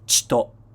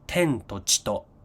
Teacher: when it's followed by to, actually you drop the vowel sound of the chi